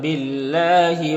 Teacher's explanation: اللہ کے لام سے پہلے با کے نیچے زیر ہے تو اللہ کے لام کو باریک پڑھیں گے